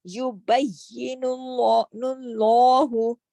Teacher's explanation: نون پہ پیش ہے، نون پیش نون جو ہے اس کی وجہ سے اللہ کا جو لام ہے موٹا ہو جائے گا، لام جلالہ ہو جائے گا